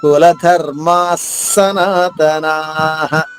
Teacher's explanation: నా దీర్ఘంగా చెప్పిన తర్వాత విసర్గ ఉచ్చరణ హ హరస్వంగా చెప్పాలి